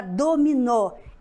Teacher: A sílaba mais forte no sílaba nó, ou seja, na última. Logo, ela é oxítona.